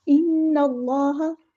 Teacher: ان اللہ، اللہ کا جو نام ہے یہاں پہ ہم پورا ادا کریں گے، موٹا ادا کریں گے۔ اس میں جلالہ جو ہے وہ تفخیم ہو رہا ہے، نون پہ غنہ زمانی ہو رہا ہے، ایک الف کے برابر رکیں گے۔